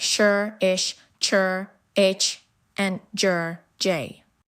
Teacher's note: Postalveolar, the tongue blade touches behind the alveolar ridge for sounds like sure, ish, chur, ich, and jur, j.